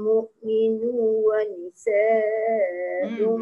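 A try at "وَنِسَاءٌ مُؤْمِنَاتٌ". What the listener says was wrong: Nanya tertinggal. Mu'minuna wa nisa'um.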